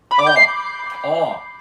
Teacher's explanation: a letra O na língua balorana sempre, sempre fica com som aberto de ó, ou seja, o som dela nunca muda para o fechado, nem para on nasal e nem para u reduzido.